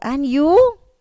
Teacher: Notice the rising intonation and you. The rising intonation, that means a stress on you.